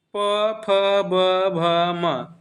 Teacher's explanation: प फ ब भ म यानी हमारी ओस्ट से होती है